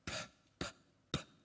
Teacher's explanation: I'm pronouncing it with a little puff of air called aspiration.